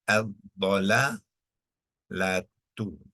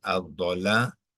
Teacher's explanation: sebab ah dia melibatkan hukum idgham Syamsi ya orang Syamsi maknanya lam ni akan dimasukkan ke dalam dad lam tidak lagi disebut